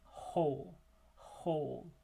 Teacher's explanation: Whole is a fricative. However, there's no closure in the mouth. It's actually just a narrowing of the glottis in the larynx. So the only narrowing that's occurring is down there in the larynx. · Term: H sound